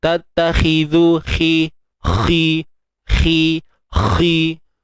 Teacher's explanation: Bila kita sebut khi, pangkal lidah juga kena naik. Kalau tak naik, dia jadi tattakhi, khi. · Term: huruf kha